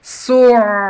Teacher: Perhatikan ain yang ditasdid itu berjalan ya, jangan kaku. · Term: sifat tawasudnya ain